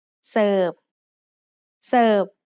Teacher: the letter r in the English word serve doesn't get pronounced in Thai